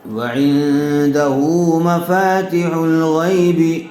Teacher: ہا کے اوپر الٹا پیش ہے اس لیے ہا کو تھوڑا کھینچ کر پڑھیں گے